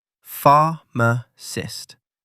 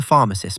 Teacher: 3 syllables. Pharmacist. Stress on the first syllable.